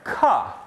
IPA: k